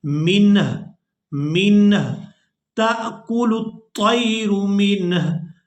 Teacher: تو یہاں ہم نے وقف کرنا ہے، ہا کو ساکن کر دینا ہے اور اس لفظ کو اس طرح سے ادا کریں گے.